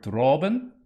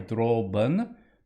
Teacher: make sure this is a nice bright aw for droben, not ben, not like me, but droben with a schwa at the end.